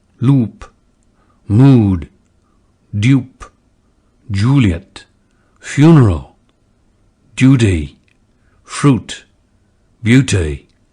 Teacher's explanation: retain the lip rounding of conservative RP uh in the goose lexical set